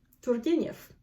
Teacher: And the R's in Russian are rolled.